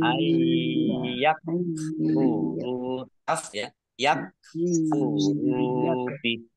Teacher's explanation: Ayyak furubi, nun sukun bertemu dengan huruf ya, bacaan idgham bi gunnah, masuk dengan mendengung, yaitu mendengung ya